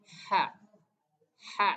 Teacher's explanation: Nah jadi dia itu seperti ada desisan dari tenggorokan kita ya